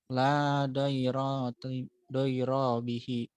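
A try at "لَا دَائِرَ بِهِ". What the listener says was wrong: Ayo ritmenya pasin. La doiro bihi. Nah, jadi ritmenya satu kesatuan. Doiro bihi.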